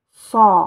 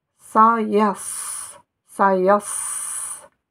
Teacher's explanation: C'est la lettre Sod, Son, et ne pas confondre avec Se. Se, Son. Vous voyez que c'est emphatique.